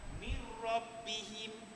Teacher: Dia masuk huruf dan dia ditekankan jangan dengung bila gunnah. Tanpa dengung atau dengan tidak didengungkan. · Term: idgham bila gunnah